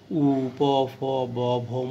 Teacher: উচ্চারণ করার সময় ওষ্ঠ মানে ঠোঁটের ওখানে এসে বেশি বাধাপ্রাপ্ত হয়, আর এই জন্য বলা হয় ওষ্ঠবর্ণ।